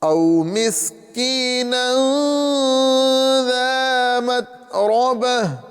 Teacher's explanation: یہاں پہ تا کو صاف ادا کرنا ہے، یعنی تا میں قلقلہ نہیں کرنا ہے